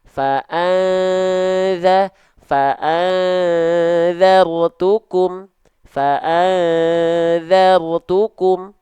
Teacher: Makhrajnya begini, za. Maka ketika ikhfa, ketika samar dengung, ujung lidahnya mengarah. Tapi belum nempel.